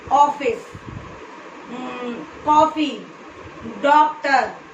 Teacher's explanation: जब इसे हम बोलते हैं तो हमारे मुख का जो आकार है ये ओ हो जाता है, ऐसे ओ, जैसे कि ऑफिस, कॉफी, डॉक्टर, सभी अंग्रेजी शब्दों में ये नहीं लगता। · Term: अर्धचंद्राकार